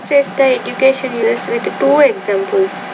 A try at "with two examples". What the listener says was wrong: When you say the word to, you got to pronounce the T not as a D, but with two examples.